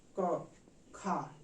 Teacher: आप लोग इसको जरूर नोट करिएगा और इसको समझने का प्रयास करिएगा कि कैसे, जैसे हम क और ख का उच्चारण करते हैं, क खा, क का उच्चारण कर रहे हैं तो हमारे मुखांग से जो हवाएं हैं कम निकल रही हैं, लेकिन हम ख उच्चारण कर रहे हैं तो हमारे मुखांग से हवाएं जो होती हैं ज्यादा निकल रही हैं। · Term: महाप्राण